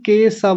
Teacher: केशव को केशव बोल रहे थे। स दंतीय सकार वाला स लगा रहे थे